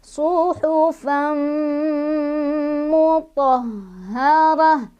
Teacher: Suhufan ketemu sama idgham bi gunnah karena ada tanwin fathah bertemu dengan mim ya. Cara bacanya tanwinnya langsung kita masukkan ke mim sambil berdengung lagi. Jadi suhufan sampai kerasa ke hidung.